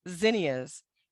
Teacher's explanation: The next letter, Z, is a voiced consonant. Place hand on throat to feel a slight vibration when you make the Z sound